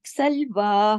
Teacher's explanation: एक अलिफ के बराबर, खड़ी जबर की वजह से।